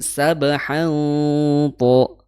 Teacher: Bukan sabahan itu tipis, ya, tapi sabahan to, ya tebal. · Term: ikhfa